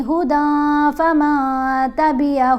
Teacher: دال کے اوپر احفا ہے, احفا کیسے کرتے ہیں, آواز جو نون کی آواز ہے اس کو ناک میں چھپا کر پڑھتے ہیں. اگر ہم یہاں پر پڑھتے ہیں ہدن, دن, نون کی آواز ہے, اس آواز کو ہم نے واضح نہیں پڑھنا.